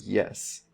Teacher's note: we have that Y sound and that's a Glide so we get that little J there for a y then we have e and then we have S so so